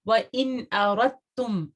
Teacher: دال جو ہے وہ تا کے اندر مرج ہو جائے گا. آپ کا ادغام یہاں پہ ہو رہا ہے.